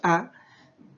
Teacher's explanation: Entonces, y cuando nosotros pronunciamos la vocal A, automáticamente si decimos A, nuestra lengua, ¿cierto?, está en el centro de nuestra cavidad vocal y justamente se va hacia la parte de abajo. Y decimos de que es abierta porque nuestros labios totalmente se abren, nuestra boca dice A, ¿cierto?, con la boca abierta, no cerrada.